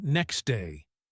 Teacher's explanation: That is a lot of movement. So in fast speech we drop the t.